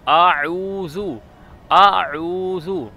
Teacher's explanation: हमजा गले के नीचे से अदा होता है और आइन गले के दरमियान से अदा होता है।